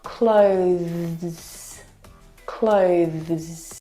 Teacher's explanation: Now, the thing to remember that's really important is with that TH sound, you need to bring your tongue through your teeth. Now, the TH sound is very, very soft. It is definitely still there. It needs to sound different from the verb close, okay, which doesn't have the TH sound.